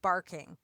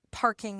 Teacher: And a really clear example is the p, b. In English, we have a voiced b and an unvoiced p. And that sound differentiates a lot of different words in English.